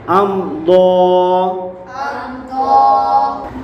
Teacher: حمزہ میم زبر ام، حمزہ میم زبر ام، ضاد کھڑا زبر ضا، ضاد کھڑا زبر ضا، ام ضا۔ ام ضا، میم ساکن کے بعد حرف ضاد آ رہا ہے تو یہاں اظہار شفوی ہوگا، یعنی گنہ نہیں کریں گے